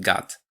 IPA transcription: gät